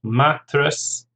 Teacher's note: Mattress, 2 syllables, stress on the first